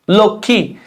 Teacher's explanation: যুক্ত বর্ণের সাথে মফলা উচ্চারণ হয় না